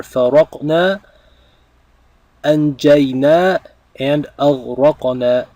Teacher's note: And these verbs are conjugated for nahnu, for we, because we have the na, the long na, the noon followed by an alif at the end of each of these verbs